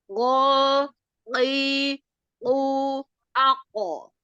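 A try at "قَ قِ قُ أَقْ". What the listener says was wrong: Ya, jadi untuk ancang-ancang di huruf qafnya, untuk nyari makhrajnya, itu jangan ako. Enggak gitu. Jadi enggak ada jeda. Ko, ki, ku, ako.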